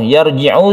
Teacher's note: Sukun ra sebelumnya ada fathah disebut roh yang tebal